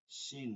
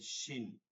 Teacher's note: আছেন তারা খেয়াল করবেন এটা হচ্ছে শিন শিন জিহ্বা এবং এবং তালুর মাঝখান থেকে একটা বাতাস চলে আসবে